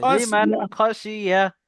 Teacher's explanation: নুন না জি, সাকিনের বিনা শোনেন, নুন সাকিনের তাড়াতাড়ি পরে হুরুফে হালকি ছয়টি অক্ষরের মধ্যে থেকে খ এসছে, তাই খ নুন এসছে, সাকিনের আওয়াজকে বিনা গণ্যায় জাহির করে তাড়াতাড়ি পড়তে হবে।